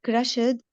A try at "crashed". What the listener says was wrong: Crashed without the sound. E